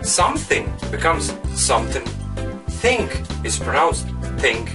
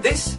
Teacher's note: in Irish English they don't pronounce the voiced and unvoiced th